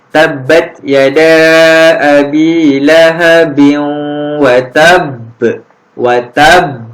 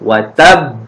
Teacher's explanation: huruf qalqalah ba ni ada tanda sabdu. Jadi kita kena lantunkan lagi kuat. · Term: qalqalah akbar